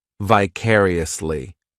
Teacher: This adverb has 5 syllables, and the stress is on that second syllable, vicariously. The third syllable, it's like that letter I just has that E sound, and the fourth syllable has the schwa